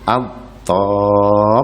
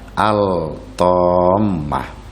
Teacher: Lamnya dimasukkan ke huruf ta. At-tammatu, bukan al-tammah, tapi at-tammatu. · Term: idgham